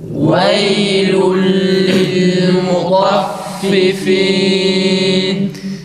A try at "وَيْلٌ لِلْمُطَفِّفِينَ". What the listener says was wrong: Fa'ların harekeleri iyi çıksın arkadaşlar. Vav'ı tok sesle çıkarmaya çalışırken a sesi çıkmasın. Vaylun değil.